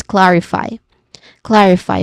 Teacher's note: When it comes to pronunciation, we start with clarify which has three syllables. But the stress syllable is on the first which is clar. Now clar the first syllable it starts with a consonant cluster of the consonant sounds that K and L makes and then followed by a short a vowel sound and ends with a letter R sound.